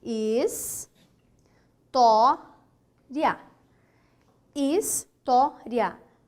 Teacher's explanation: Segunda sílaba de trás para frente, ela é uma paroxítona.